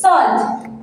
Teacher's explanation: Here A represents long O, so this is salt.